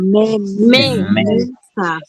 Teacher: Entonces, sa, última sílaba, me, penúltima sílaba. Entonces, tiene la mayor fuerza de voz en la me, está en la penúltima sílaba.